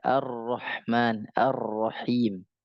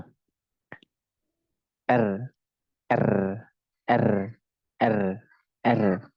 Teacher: sifat R itu takrir maka dia harus digetarkan